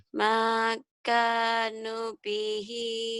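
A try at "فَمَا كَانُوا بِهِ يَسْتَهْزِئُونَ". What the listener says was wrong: nunya juga panjang kan? Ini panjang semua. Makanu Makanu bihi yastahzi'un.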